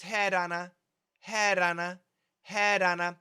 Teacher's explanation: it's a very fast D